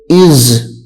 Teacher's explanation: یہاں پہ سیٹی کی آواز نکلے گی کیونکہ یہ سیٹی والے حروف میں سے ہے زا